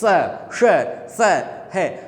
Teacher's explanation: जब स, श और से और है का जब उच्चारण करते हैं, जीभ और तालू के बीच में क्या होता है? संघर्ष होता है, एक तेज रगड़ाहट होती है